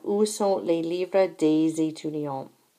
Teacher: There is liaison after day when the next word begins with a vowel sound.